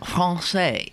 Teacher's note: It's in the back of your throat, the French R. Français. It's back here.